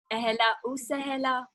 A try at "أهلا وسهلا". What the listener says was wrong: I like that.